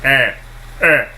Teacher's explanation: It's a rounded front vowel